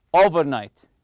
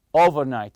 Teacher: stress the first part the over part